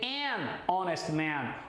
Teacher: esse H de honest, esse H é mudo, por isso que o N vai se combinar com o O